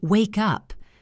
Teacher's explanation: The K sound connects to the U sound. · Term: connected speech